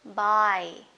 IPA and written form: baɪ (bye)